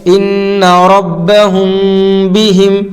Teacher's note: میم ساکن کے بعد اگر با آئے گی تو غنہ کے ساتھ اخفا ہوگا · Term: اخفا شفوی